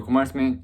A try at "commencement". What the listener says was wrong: You're pronouncing commencement. There's no R.